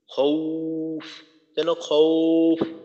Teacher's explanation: ওয়াওয়ের উচ্চারণটা ওর মতো হবে না, বরং দীর্ঘ উর মতো হবে।